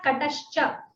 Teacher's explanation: the visarga becomes sha before cha